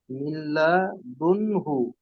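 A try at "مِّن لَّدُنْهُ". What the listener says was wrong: মিল্লাদুনহু, তাজদিদটা ছেড়ে গেছে, লামের উপর তাজদিদ এসেছে।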